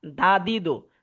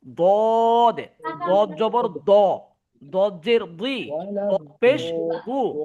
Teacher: আর দালের উচ্চারণ হয় দা, বুঝছেন, পাতলা হয় দা, দা দি দো। আর দদ হয় দদ, মুখটা একদম গোল হয়ে আসবে।